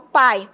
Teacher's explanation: Uma é com um som mais forte, que é o A, e a outra é com um som mais fraco, que é o I. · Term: ditongo